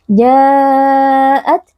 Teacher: Ja'at di sini ada mad wajib muttasil karena ada mad tabi'i yang sebelumnya berharokat fathah ja kemudian berjumpa dengan hamzah di dalam satu kata dibaca panjang 4 atau 5 harokat